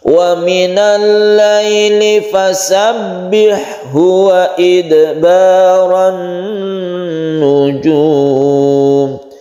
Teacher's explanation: Ada dal yang sukun, ini qalqalah sughra karena di tengah-tengah ayat. Kemudian tasydid nun ini kita dengungkan karena dia itu al bertemu nun kemudian membentuk tasydid.